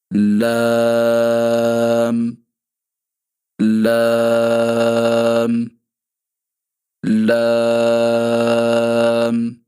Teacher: زبان کے باریک کنارے یعنی آپ کے زبان کا سامنے والا جو کنارہ ہے اس کو آپ اپنے سامنے اوپر والے دانتوں کی مسوڑوں کے ساتھ لگائیں گے تو وہاں سے باریک آواز میں لام لام لام ادا ہوگا۔